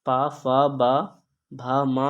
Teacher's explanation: क्योंकि ये पा वर्ग के सभी हैं और पा वर्ग के जो व्यंजन होते हैं ओष्ठ ध्वनियाँ कहलाते हैं